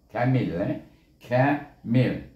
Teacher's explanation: Bila sebut kaf di sini tak terangkat lidah.